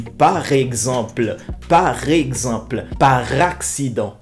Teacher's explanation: si le mot commence par une voyelle on doit lier le R de par avec l'autre mot commençant par une voyelle